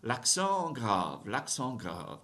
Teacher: I didn't do liaison because grave doesn't start with a vowel sound, right? L'accent grave, l'accent grave.